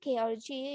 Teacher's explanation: When you say K or G, you are using the velum, so they call it velar consonant.